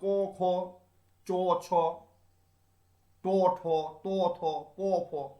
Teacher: এইগুলো উচ্চারণ করতে গিয়ে এই যে কণ্ঠতন্ত্রী, এই কণ্ঠতন্ত্রীকে কোনো ব্যাহত করে না, ফলে কোনো যদি বাধা যদি না পায় তাহলে কম্পিত হচ্ছে না, অকম্পিত থাকছে। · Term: অঘোষ ব্যঞ্জন